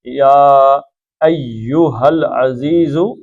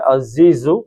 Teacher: زے کی یاد رکھیے گا، ایک ہلکی سی سیٹی کی آواز بھی آتی ہے